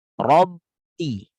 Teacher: Apa bukti bahwa kita baca ba? Ada bunyi yang mengalir. Bunyi itu muncul pada bibir kita. Rabbi. Seperti sedang nahan sesuatu.